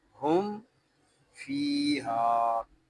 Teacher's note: میم کی ادائیگی میں آپ کے ہونٹ آپس میں مل جائیں، اور آپ نے ہونٹ اس وقت جدا کرنے ہیں جب ہم نے فا کو پڑھنا ہے، فا کو ایک الف تک کھینچ کے پڑھیں گے کیونکہ یہاں یا مدہ ہو رہا ہے، ہا کو بھی ایک الف تک کھینچ کر پڑھیں گے کیونکہ یہاں الف مدہ ہو رہا ہے۔